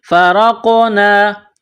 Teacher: ملانا ہے، یہ نقطوں والا بڑا قاف ہے، قاف کو موٹا پڑھنا ہے، قاف کے اوپر جزم ہے تو را کو قاف کے ساتھ ملائیں گے اور قاف پر قلقلہ کریں گے ، فرقنا را قاف زبر رقو نون الف زبر نا، فرقنا